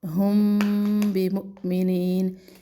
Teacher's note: میم ہونٹوں سے ادا ہوتا ہے تو اس اخفاء کو ہم اخفاء شفوی کہتے ہیں